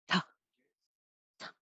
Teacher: The tip of the tongue taps behind the front teeth or the TDN location and then releases a puff of air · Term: T sound